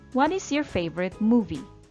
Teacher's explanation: my voice goes down at the end part of the question